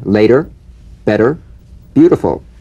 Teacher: the medial T becomes a soft d alright it not a complete d but it goes toward addy